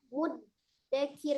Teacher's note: Huruf dal sendiri juga dibacanya dengan al-jahru, dengan jelas ya, tidak al-hams, tidak mengalir nafasnya. Ya, termasuk huruf yang qalqalah ya.